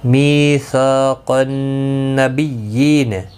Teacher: می یا مدہ ہے، سا الف مدہ ہے، دونوں کو ایک ایک الف کی مقدار کے برابر کھینچ کر پڑھیں گے